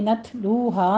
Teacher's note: پڑھیں گے، نت لو ہا میں تا پر ہمس کریں گے، لو میں واو مدہ ہے، دونوں ہونٹوں کو گول کرتے ہوئے ادا کریں گے، 2 کاؤنٹ کرنا ہے ، ہا میں بھی الف مدہ ہے، 2 کاؤنٹ کرنا ہے،